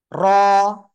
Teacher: র, মোটা আওয়াজে পড়তে হবে, জিহ্বার আগার পিঠ তার বরাবর উপরে তালুর সাথে লাগিয়ে